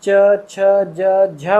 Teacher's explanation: आपकी जो जीभ का जो सिरा है वो आपकी तालु पे लगता है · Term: चै वर्ण